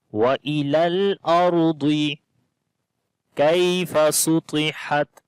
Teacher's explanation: So this ra we read in heavy sound because ra has a sukun sign and there is fatha before the ra